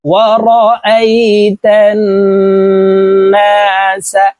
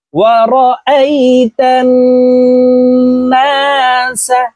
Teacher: তাসদীদ ওয়ালা নুনের সাথে গুন্নার সহিত পড়তে হবে, ওয়াজিব গুন্না, গুন্না না করিলে গুনাহগার হব।